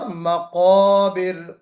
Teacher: قاف کو ہم تھوڑا سا استعلا کے ساتھ پڑھیں گے